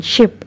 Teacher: sh in ship is voiceless